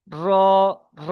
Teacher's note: উল্টোবিট এবং তার বরাবার উপরের তালুর সাথে লাগিয়ে উচ্চারিত হয় র উপরের তালুর সাথে লাগিয়ে দেন উল্টো জীবের আগার উল্টোপিট